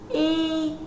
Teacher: khi phát âm âm y, luồng hơi đi ra tự do, do đó âm y được gọi là nguyên âm.